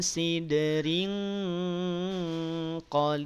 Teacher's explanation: tanwin kasroh bertemu dengan qaf, maka tanwin kasrohnya juga samar, tidak dibaca in.